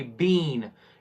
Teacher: it would be longer duration of e sound. B, n, then long duration in between b and n, then would be bean. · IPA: /iː/